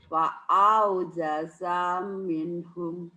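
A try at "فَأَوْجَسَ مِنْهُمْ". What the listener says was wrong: fa, kedengarannya kayak wa ya, bibir ibu kurang ngebuka. Fa aujasa minhum, diulang balik. Sanya pendek.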